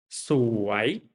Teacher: สวย is rising tones like สวย go down and up สวย which mean beautiful, right?